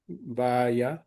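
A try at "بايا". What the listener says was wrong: ఇప్పుడు చివర్లో మీరు ఎలాగైతే స్ట్రెస్ చేస్తున్నారో అలా స్ట్రెస్ చేయకుండా ఫ్రీగా వదిలిపెట్టాలి.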